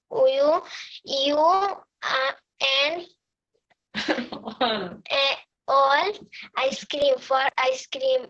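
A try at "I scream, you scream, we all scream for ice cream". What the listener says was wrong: We all scream. এটা কিন্তু আইসক্রিম না, এটা স্ক্রিম। উচ্চারণটা হবে স্ক্রিম, মানে চিৎকার করা, শাউট করা।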